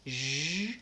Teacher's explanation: And so that's the sound that has to continue. It's like the SH, shh, but my voice is on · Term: zh sound